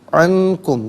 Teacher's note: عنکم میں نون ساکن پر اخفا کیا جائے گا